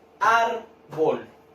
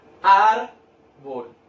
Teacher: Tiene dos sílabas, las separé en sílabas, y yo cargo la voz ¿en qué parte? Árbol. En ar, ¿cierto? En la sílaba ar.